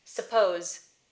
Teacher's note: if suppose was the end of the sentence the end of the thought i would tend to devoice that z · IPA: [səˈpouz̥